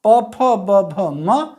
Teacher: प, फ, ब, भ, म। आप देख रहे होंगे आपके दोनों ओठ एक दूसरे से टकरा रहे हैं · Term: ओष्ठ